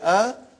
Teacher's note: alif has no speech sound when you say ah it is the sound of hamza